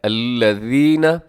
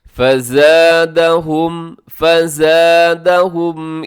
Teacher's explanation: ذال نرمی سے پڑھی جاتی ہے، اس میں سیٹی نہیں ہوتی